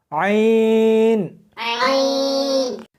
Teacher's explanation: اس کو حلق میں سے سختی کے ساتھ نکالنا ہے، عین۔ ملا کر پڑھیں، عین۔